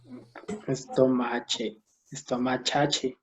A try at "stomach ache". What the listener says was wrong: But we have first S. Tenemos que empezar con S. Stomach. And CH sounds like K. Stomach. Stomach ache. Stomach ache.